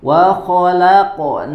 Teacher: Wa khalaqnakum. Nah, di sini dibaca dengan tebal dan jangan lupa dipantulkan, ya, karena huruf qaf dalam keadaan sukun dia memantul. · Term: Qalqalah